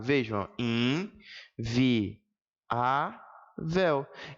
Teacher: palavra inviável vejam em vi a véu e aqui sim observa eu tenho a separação de vogais separou vogal de vogal o nome é hiato